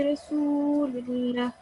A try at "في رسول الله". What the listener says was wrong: Just make ra a little bit thicker. في رسول الله.